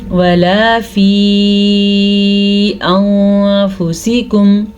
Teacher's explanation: اس مد کی مقدار 3 الف کے برابر ہے